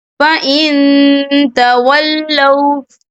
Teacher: نون ساکن کی آواز کو ناک میں چھپائیں گے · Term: اکفا